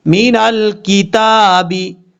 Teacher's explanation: دیں گے، نون لام زبر نل، کاف زیر کی، مین الکتابی، تا کے اوپر کھڑا زبر ہے، ایک الف کی مقدار لمبا کیا جائے گا